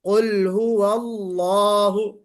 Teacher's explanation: اب یہ جو لفظ جلالہ ہے، اس لفظ جلالہ سے پہلے زبر آ گیا تو ہم اس اللہ کو ہم موٹا پڑھیں گے